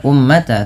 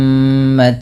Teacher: Kemudian pada lafal ummatan wasatan litakunu, pada lafal mim berharakat tasydid, ini ditahan dulu bunyi suara nya sepanjang 2 harakat karena terdapat hukum tajwid berupa bacaan gunnah. Maka jangan hanya sekadar ummata, tapi ditahan dulu ummatawa.